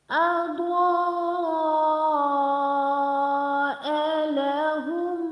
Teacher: Dod with alif and madda, so we make dod 6 seconds long.